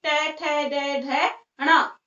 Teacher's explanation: Next देखिए ट वर्ग, इसका उच्चारण स्थान होता है मूर्धा। दांत और तालु के बीच का जो हिस्सा होता है जिसे हम मसूड़े बोलते हैं, वहां पर इसका उच्चारण स्थान होता है ट वर्ग का।